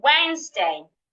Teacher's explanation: the s in this word sound like a z